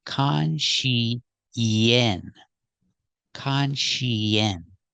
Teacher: We need a sound in the middle to link these sounds. We use the sound y, like yellow and yesterday.